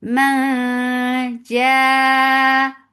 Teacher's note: This ikhfa is light, so you are keeping your tongue straight. You are going towards the makhraj of jim and keeping the sound in your nose. Ma ja, 4 counts long. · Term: Mad muttasil wajib